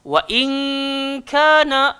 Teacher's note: Ingat nun mati bertemu kaf, bunyi dia ing.